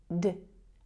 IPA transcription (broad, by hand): d